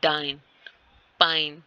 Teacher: From manner of articulation, articulation के हिसाब से जो डी है एंड पी है वो स्टॉप है, डाइन, पाइन। ठीक होगा, डी और पी की आवाज है वो एक दफा स्टॉप होकर फिर से आती है